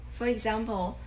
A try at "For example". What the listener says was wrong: and then say, for example, and kind of increase the tone a little bit more there.